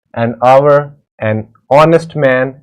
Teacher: the words hour, honest, air begin with a vowel sound as the initial consonant H is not pronounced.